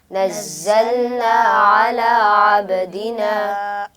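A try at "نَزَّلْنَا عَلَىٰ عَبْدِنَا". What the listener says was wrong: आइन को दुरुस्त तरीके से पढ़िए। अला अब्दिना।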